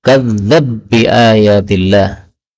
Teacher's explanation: ba ketemu dengan ba boleh idgham menjadi kadzdzab bi ayatillah